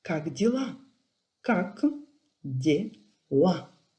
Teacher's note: L, un peu plus dur, comme dans l'article défini là, par exemple, dans la langue française, et A est plus ouvert.